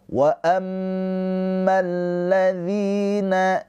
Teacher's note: Wa amma mim yang bertasydid ini adalah ghunah musyaddadah. Ditahan dua harakat mimnya.